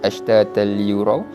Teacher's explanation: Tadi nun mati, sekarang tanwin dua di atas, kita masuk terus pada huruf selepasnya, iaitu huruf lam, dan dibaca tanpa dengung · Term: idgham bila gunnah